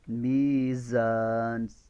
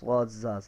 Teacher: اس کے اندر آواز کی سیٹی کا ہونا ضروری ہے، سین میں بھی سیٹی کی آواز ہے، زا میں بھی سیٹی کی آواز ہے